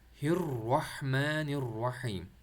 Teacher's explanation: ہا کو آپ نے مڈل تھروٹ سے نکالنے کی کوشش کرنا ہے